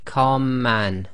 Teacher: the two M's sort of merge together and you end up holding the two M's for a little bit longer and effectively not taking a pause between the two letters the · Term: gemination